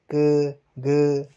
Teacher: तो अल्पप्राण जो होते हैं इनके उच्चारण में फेफड़ों से बाहर निकलने वाली वायु की मात्रा जो है वो कम होती है।